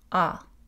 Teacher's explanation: Autre phénomène, le A est postérieur.